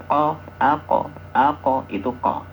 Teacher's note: Jadi lidah yang paling belakang atau yang paling pangkal itu untuk ko ya.